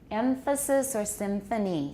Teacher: They're allophonic, they're allophones of the alveolar nasal, or we may also have another kind of funny nasal that's allophonic. Labiodental